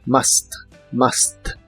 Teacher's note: la u se pronuncia como una a normal de español